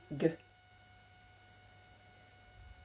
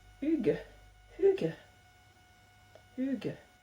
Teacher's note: ça se passe vraiment au niveau de la gorge, et c'est un peu à mi-chemin entre ge et que, mais un peu plus doux